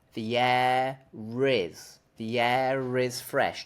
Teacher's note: if you want to connect the word air to the word is then you have to use an R sound